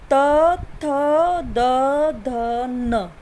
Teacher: जीभ है ना वो दांत को टच करती है। त थ द ध न कर रही है।